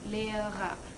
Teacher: the first R here would be the consonantal R, and the last one would be the vocalic. And the first one is consonantal because it's the first letter of the second syllable of the word, and the last one is vocalic because it's at the end of the syllable.